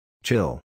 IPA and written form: tʃɪl (chill)